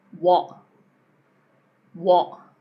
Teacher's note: So we're closing again, what. You're just closing before you get to the T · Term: glottal T